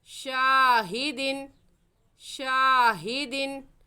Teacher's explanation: और शाह को खींचेंगे क्योंकि अलिफ मद्दा है और अलिफ मद्दा को खींच कर पढ़ते हैं। · शीन अलिफ ज़बर शाह, हा ज़ेर ही, शाही, दाल दो ज़ेर दिन, शाहिदिन। तनवीन के बाद हरूफ हल्की में से आइन आ गया है, इसलिए यहाँ पर गुन्ना नहीं करेंगे